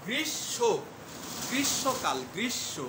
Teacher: অনেকে বলেন যে গ্রীষ্ম বা গ্রীষ্মকাল, এখন গ্রীষ্মকাল বা গ্রীষ্মকালীন ছুটি বা গ্রীষ্মকাল, আসলে হবে উচ্চারণটা হবে গ্রীষ্ম, উচ্চারণটা হবে গ্রীষ্ম, গ্রীষ্মকাল, গ্রীষ্ম, অর্থাৎ তালবস্য দুইবার উচ্চারণ হবে। এখানে মূর্ধন্য ষটা তালবস্যে পরিণত হবে এবং মটা এখানে উচ্চ থাকবে। এই ম এর প্রভাবে এই যে সংযুক্ত ব্যঞ্জন মূর্ধন্য ষ সেটা তালবস্য দীপ্ত হবে।